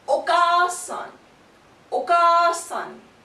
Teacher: The ka is stretched in this case. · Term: long vowels